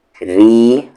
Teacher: را کو یہاں پر لائٹ پڑھیں گے کیونکہ را پر زیر ہے